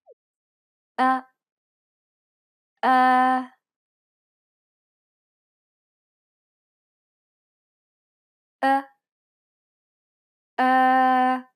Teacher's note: it's similar to the o sound in the word boring but with unrounded lips